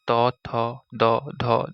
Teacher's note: ত বর্গের বর্গগুলো অর্থাৎ ত, থ, দ, ধ, দন্ত্য এগুলোর উচ্চারণ জিহ্বার উপরের পাটির দাঁতকে স্পর্শ করে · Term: দন্তবর্ণ